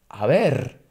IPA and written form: aˈβ̞er (a ver)